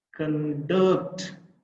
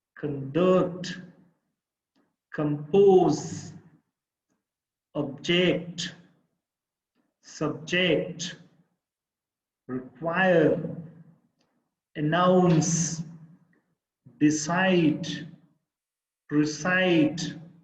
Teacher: the last syllable is the stressed syllable i mean the second syllable